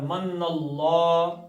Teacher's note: اللہ کا لام موٹا پڑھنا ہے، پیچھے زبر آ گئی